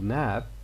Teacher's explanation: if you listen to b at the end of nab as the last word of a sentence it will be partially voiceless